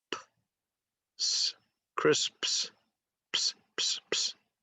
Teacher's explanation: So you have 2 unvoiced sounds at the end